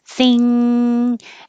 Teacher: This is the back in the same position as the G and the K, but your tongue holds it there. The back of your tongue touches the back of the top of your mouth, closes off the airflow from the mouth, so it has to go through the nose. Thing. And if you're doing it correctly, if you squeeze your nose closed, you won't be able to keep doing it because it's closing off the airflow. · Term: NG combination